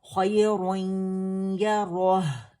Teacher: इदगाम नाकिस बिलगुन्ना था, यानी जो इनकम्प्लीट मर्जिंग है और विद गुन्ना है उसे कहते हैं इदगाम